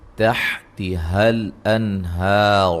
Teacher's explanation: نون ساکن کا اظہار ہے اور را کو موٹا ادا کریں گے